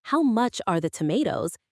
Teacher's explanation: When you ask, "How much are the tomatoes?" Make sure your voice goes up at the end. That rising intonation shows it's a question.